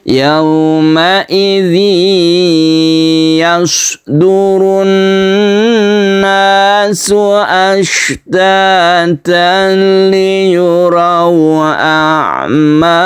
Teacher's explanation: Kemudian di sini ada tanwin bertemu dengan lam yang kita sebut idgham bila gunnah, tidak berdengung.